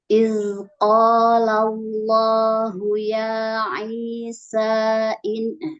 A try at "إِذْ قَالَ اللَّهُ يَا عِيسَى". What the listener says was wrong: Panjangin, mad jaiz.